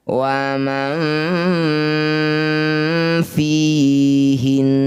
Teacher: Saat bacaan gunnah musyaddadah ada di akhir bacaan, maka huruf hidupnya tidak usah dibunyikan, huruf vokalnya. Jadi tertinggal hanya gunnahnya saja, dengungnya saja.